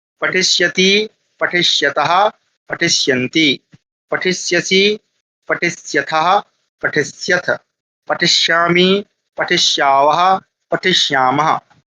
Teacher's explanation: तो ये मूर्धन्य शकार है, तो मूर्धा से इसका उच्चारण करना है आप लोगों को।